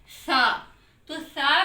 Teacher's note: जुबान की नोक को ऊपर वाले दो दांतों के सिरे से लगाना है